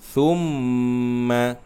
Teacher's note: Masukkan huruf mim dan keluarkan dengung di hidung selama 2 harakat. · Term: mim yang mempunyai sabdu